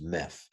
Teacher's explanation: it aspirates, it becomes breathy because the next word begins with a rough breathing mark